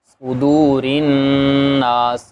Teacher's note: بھی 2 حرکت کے برابر، صدو صاد موٹا ہوگا، صدورن ناس، نون مشدد ہے اس لیے اس نون کے اندر بھی غنہ ہوگا